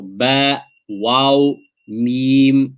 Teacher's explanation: you will find both lips are used when pronouncing these letters